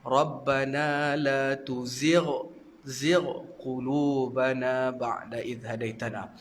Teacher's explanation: Tuzi' tu dah jadi huruf ain, sedangkan dia bukan huruf ain, huruf gha.